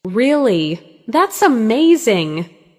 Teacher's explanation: Now practice excitement with rising pitch.